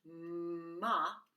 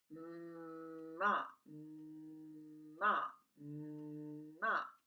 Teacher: m is made by pressing your lips together activating your voice and letting out air through your nose m is nasal that means if you cover your nose it · there should be a vibration in your nose as well as in your throat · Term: nasal sound